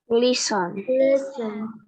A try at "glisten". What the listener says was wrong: Ya, I-nya bukan I panjang ya, pendek ya. Glisten.